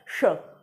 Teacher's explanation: ज़ुबान का जो हिस्सा होता है बीच वाला, वो ऊपर मूर्धा पे जाके आएगा श। जब आप वहाँ पे टच होगा तब वो जाकर के ही ये श निकलेगा, वरना नहीं निकलेगा। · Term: मूर्धन्य वर्ण